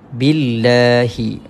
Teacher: kita baca dengan nipis sebab ya sebelumnya baris sebelumnya baris bawah